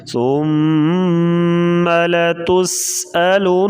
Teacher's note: سین سی ٹی کی آواز سختی سے پڑھیں گے. نون کے اوپر پھر شد آ گئی, یہاں پر غنہ کریں گے